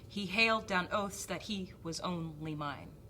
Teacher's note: Hailed is the stressed. Down oaths. Oaths is stressed. So hail, oaths, he, and only.